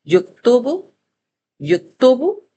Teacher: आप देखेंगे असल मखरज अपनी जगह पे है, नून पे हमारी जबान की गुलाई ऊपर लग रही है, लेकिन पेश को प्रेजेंट करने के लिए हमारे होंठ गोल हो रहे हैं